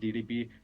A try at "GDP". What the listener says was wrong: Famous country with a great DRB. I don't know what DRB means. This is a pronunciation problem.